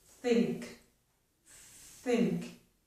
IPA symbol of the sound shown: θ